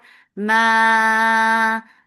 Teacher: Ma mad munfasil jais, make it 4 counts long without going into your nose for this long vowel